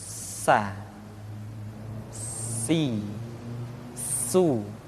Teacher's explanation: Di antara sifat yang menonjol ketika kita mengucapkan huruf sa atau huruf sin adalah sifat as-safir, di mana ketika kita mengucapkan huruf sa ada suara tambahan yang menyerupai dengan suara belalang. Sa, si, su.